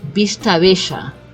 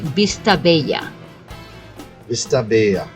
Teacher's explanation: a double l in Argentina we say the sound of Ash